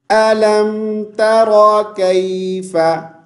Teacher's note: रा को फुल मोटी आवाज़ के साथ पढ़ेंगे